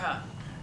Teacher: It's nothing but air coming out your chest, barely rubbing against your throat.